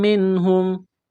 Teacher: نون ساکن کے بعد حروف حلقی میں سے ہا ہے تو نون ساکن پر غنہ نہیں کریں گے، آواز ناک میں نہیں چھپائیں گے · میم مشدد ہے، غنہ کریں گے، آواز ناک میں چھپائیں گے۔